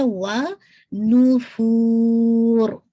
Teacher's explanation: نون کی دمہ واضح ہونا چاہیے، پورا آپ کا سرکل منیمم ہونا چاہیے. فور کر کے پھر آپ انشاءاللہ را پہ ہیوی کر کے روکیں گے 4 کاؤنٹ کے ساتھ.